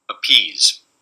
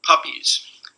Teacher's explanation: in the first one i have a stop uh in front of a stressed vowel voiceless stop here uh in the second one i have it uh after